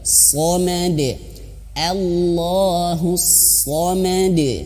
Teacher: Shadnya benar-benar mengeluarkan angin dan tebal.